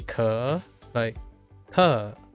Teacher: You go up and then back down, but all across one syllable.